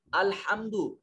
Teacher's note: اس میں ہا حروف حلقے میں سے ہے، اس کو حلق سے ادا کریں گے۔